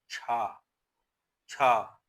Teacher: तो छा का जो उच्चारण स्थान है वो तालव्य है। अब जब छा बोल रहे हैं तो जीभ जो है ऊपर तालू पर लग रही है · छा ध्वनि अघोष महाप्राण ध्वनि है। ध्वनियों का उच्चारण स्थान है तालव्य।